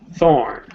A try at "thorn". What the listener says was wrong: Okay, so we're a little bit relaxed on our TH sound. I need you to bring your teeth together and don't forget you've got to block the air. Okay, even if it's for a fraction of a second.